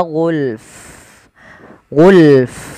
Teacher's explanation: jangan cuman gul, tapi fa-nya juga ikut mati ketika kita waqaf